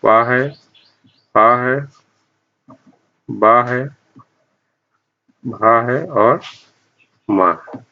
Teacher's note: इन सब का उच्चारण स्थान भी ओष्ठ होगा।